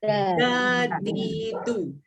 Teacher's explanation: Huruf dal ni sebutan dia oleh sebab mahraj dia pada hujung lidah dengan gusi atas, dia bukan disebut macam orang Melayu sebut huruf dal.